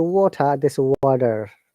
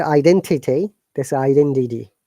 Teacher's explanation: in American English letter T in many cases sounds like d we call it flap t